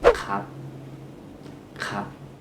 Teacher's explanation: we can drop the r sound and say just kap, kap. Easier, but it's informal.